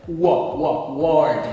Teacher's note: O W tem um som de U prolongado.